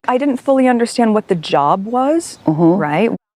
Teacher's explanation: with her Rising intonation she's asking not stating